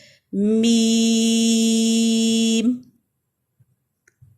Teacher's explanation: ناک میں آواز میم میں نہیں لے کے جائیں گے